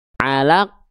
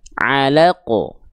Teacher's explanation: huruf qaf bersukun itu jangan sampai tidak dipantulkan sama sekali. Alaq nggak, pantulkan.